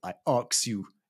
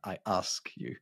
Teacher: In the modern London accent, it is very common to say I aks you instead of I ask you. · You see how the k and the s sound have swapped around? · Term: metathesis